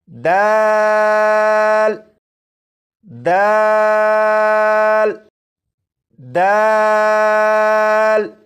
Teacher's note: अब ये जो हर्फ है दाल, इसे पढ़ेंगे और दाल को पढ़ने के लिए ज़बान की नोक ऊपर के सामने के 2 दांतों की जड़ से लगाकर जब दाल को पढ़ेंगे तो ये हर्फ भी बिल्कुल सही पढ़ा जाएगा